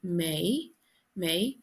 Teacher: Me in Irish is May, and it's E fada, so it's a long vowel, so it's pronounced like an AY, May, May. Misha is me emphasized.